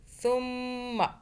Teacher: میم مشدد آ گیا، غنہ کیا، 2 سیکنڈ کا، میم کو ہونٹوں میں دبایا کچھ دیر کے لیے، سا کو سافٹ پڑھیں، ثم عرضهم على الملائکة، جو ہم نے یہ جو تی نیچے لکھا ہوا ہے یہاں پہ ہم نے سٹاپ کیا تو ایک زیر کو ہم نے 1/3 ادا کیا، تی نہیں کیا، کیسے کیا ہم نے؟